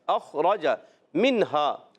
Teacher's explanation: خا حروف مستعلیہ میں سے، موٹے حروف میں سے. را پر زبر آئے، را کو بھی موٹا رکھنا ہے